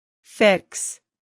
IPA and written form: fɪks (fix)